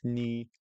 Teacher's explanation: the tone for you is also 5-5